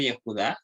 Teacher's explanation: Yehudá con acentuación en la última sílaba.